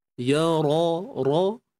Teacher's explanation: ra, berbaris atas kita kena tebalkan